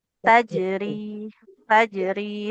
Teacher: Sempurnakan dulu jimnya qalqalah baru masuk ke huruf ro